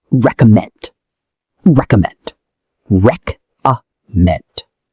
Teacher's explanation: The stress is on the last syllable.